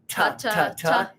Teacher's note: the ta sound, where you use your tongue to hit your teeth